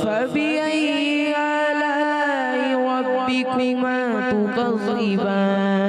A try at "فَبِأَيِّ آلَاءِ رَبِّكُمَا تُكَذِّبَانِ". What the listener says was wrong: آپ نے کیا کرنا ہے؟ فبأي آلاء مد کو تھوڑا لمبا کرنا ہے. پھر پڑھیے.